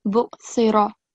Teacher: So it should be 1 second on ra. And it should be thick ra.